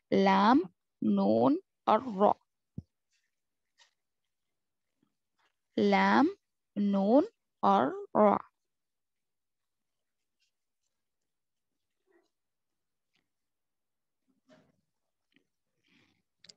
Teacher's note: इसका मखरज ये है, जुबान की नोक ऊपर के तालु को लगने से अदा हो जाते हैं। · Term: हुरूफ त्वरफिया